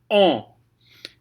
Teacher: that sound is ah, and then you're going to put it into your nose. If you don't know how to do that, an easy way to train it is to say ah, and then plug your nose and say on, and then unplug your nose and try and place it in the same place it was when you did the on with it plugged.